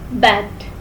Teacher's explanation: It is produced when tongue is in half low front position in the mouth.